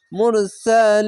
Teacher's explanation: এক দুই তিন তিনটি অক্ষর তিন আলিফ লাইনে পড়বেন মাদ্দে আরজি হবে